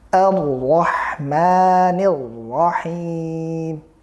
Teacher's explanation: Kesalahan adalah ketika langsung kita hamzahnya ini ikut tebal seperti ro-nya, karena memang itu hamzah bertemu, ya, ro, ya, masuk ke ro. Tentunya hamzah kita tetap jelaskan, tidak tebal, dia tipis dan harus sekali lagi buka atau berfathah